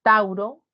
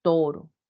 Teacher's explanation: en el latín tauro se convirtió en una sola vocal en el español toro